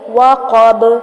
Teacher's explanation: وقب قاف کو موٹا اور با کو پھر ہلائیں گے ، کلکلا کریں گے، وقب، ومن شر غاسق اذا وقب ومن